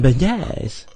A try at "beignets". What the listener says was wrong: Beignets. No, you said bidets. Bidets are different than beignets.